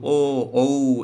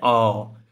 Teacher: ধ্বনিটা আসছে একদম কণ্ঠ থেকে, মানে গলার ভিতর থেকে আসছে, এবং সাথে সাথে আপনার ওষ্ঠ মানে ঠোঁটকেও এর সাথে একটা গোলাকৃতি প্রদান করতে হচ্ছে। ও, দেখেন ঠোঁট যদি ও এরকম গোল না করেন তাহলে কিন্তু ও উচ্চারণ হয় না, অ, না হয় না, গোল না করলে উচ্চারণটা হয়ে যায় অ, ঠিক না? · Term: কণ্ঠ ঔষ্ঠ